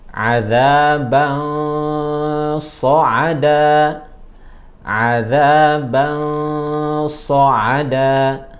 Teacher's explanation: Contoh misalnya dalam penggalan ayat adzaban sa'ada, adzaban sa'ada, tanwin ketemu shad, kita samarkan